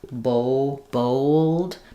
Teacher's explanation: Um, so it'll be old, kind of an O sound with a um, bold. Because it's rounded, more rounded than the A, it's going to have that kind of extra W sound connecting the two.